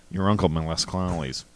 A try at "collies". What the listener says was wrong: Collies? Sounded like you're saying clawlies.